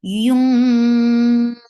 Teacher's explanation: You will you lift the tongue up, and you'll keep the sound in your nose very nicely. Yung wa is short, and the sound is heavy. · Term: heavy ikhfa